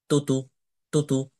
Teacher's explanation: আমি কিন্তু তা এর নামে টান দিচ্ছি কিন্তু হারকাতের উচ্চারণে অর্থাৎ জবর জের পেশের উচ্চারণে টান দিচ্ছি না